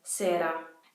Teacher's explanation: You will hear the single R, which is technically called the alveolar tap, in words like sera